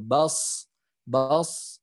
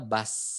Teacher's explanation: Kalau misalkan nggak naik pangkal lidahnya jadinya bas, sama aja dengan huruf sin seperti itu. Jadi huruf shad dan huruf sin ini sama makhrajnya, yang membedakannya adalah yang di huruf shad itu dinaikannya pangkal lidahnya